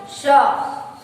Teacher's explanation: जिसका उच्चारण करते समय श्वास, जो सांस है घर्षण करके, है ना, बाहर निकल रही है, उसे हम क्या बोलते हैं, ऊष्म व्यंजन कहते हैं।